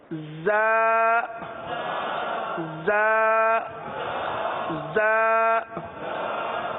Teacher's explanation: دونوں دانت آپس میں ملائیں گے اور زبان کی نوک نیچے کے دانتوں پر لگے گی اور سیٹی کی آواز آئے گی.